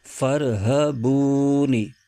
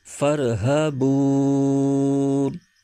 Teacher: وقف کی صورت میں آخری حرف نون کی زیر ختم ہو جائے گی اور یہ نون ساکن ہو جائے گا۔ اس کے ہجے یوں کریں گے، فا را زبر فر، ہ زبر ہ، فر ہ، با واو پیش بو، فر ہ بو، نون زیر نی، فر ہ بونی، آگے وقف فر ہ بون۔